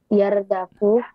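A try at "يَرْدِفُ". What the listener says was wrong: Bukan yardafu tapi yardifu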